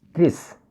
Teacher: This word consists of two syllables, increase. So we should stress on the second syllable, increase.